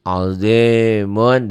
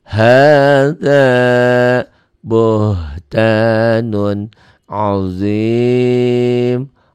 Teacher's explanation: Dihentikan jadi mad tobi ketemu satu huruf hidup dihentikan. Jadi mad arid disukun. Jadi i-nya panjang.